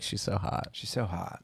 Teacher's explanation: she's a little vocal frying